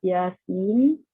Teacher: Ayat pertama, Yasin, huruf muqatta'ah. Ya dibaca 2 harakat dan sin dibaca sebanyak 6 harakat kerana ia melibatkan hukum mad lazim harfi mukhaffaf.